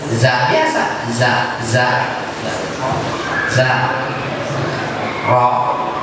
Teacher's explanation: Za itu walaupun huruf za itu mengalir suara, tapi tidak mengalir napas. Za biasa, za ro, tidak keluar, tidak mengalir napas.